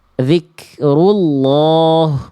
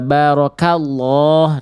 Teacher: Kalau misalnya lafaz Allahnya itu didahului oleh fathah, vokal a atau vokal u ya baru dia ee tebal lafaznya kayak vokal o ya